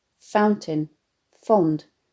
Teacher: the euphony of the repeated voiceless fricative sounds